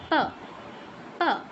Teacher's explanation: দুইটা ঠোট একবার অফ হবে একবার অন হবে